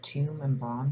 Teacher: and bomb here apart from having different vowels and not rhyming there's no representation of the b in the ipa transcription because the phoneme isn't pronounced in either word